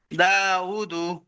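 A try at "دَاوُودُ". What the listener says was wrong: దీర్ఘం తీయాలి.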